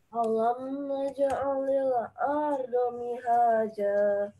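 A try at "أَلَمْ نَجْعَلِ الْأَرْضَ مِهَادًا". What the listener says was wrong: Mihada bukan hihaja. Botnya itu bo, bukan ardo pakai dal, tapi bo. Hafatul lisan. Jadi tepi lidahnya menyentuh kanan kiri gigi atau pipi. Bo ya gitu. Jadi dari pangkal belakang sampai tengah.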